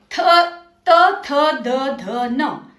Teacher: त वर्ग, थ, त, थ, द, ध, न। इन अक्षरों को बोलते समय आपकी जीभ दांतों को छूती है, इसलिए इन्हें दंत्य वर्ण कहते हैं।